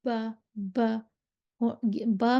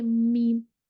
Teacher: दो गीले होंठों का गीला हिस्सा आपस में मिलेगा और जब मीम पढ़ेंगे, मीम कहेंगे तो होंठों का जो खुश्क हिस्सा है वो आपस में मिलेगा